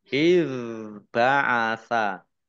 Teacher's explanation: nun kasroh ya sukun mat tobi'i panjang 2 harokat iz ba'asa ya zal sukun ini bacaan bukan kol-kolah jangan dipantulkan